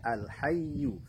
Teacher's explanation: Perhatikan huruf lamnya tidak boleh dipantulkan dan alirkan sedikit saja, ya. Alirkan sedikit saja huruf lam itu karena dia memiliki sifat tawassul.